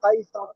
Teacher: আর কাফটি ইয়ার সাথে যুক্ত হচ্ছে, ইয়ালিন হবে। কাফ ইয়া জাবার কাই।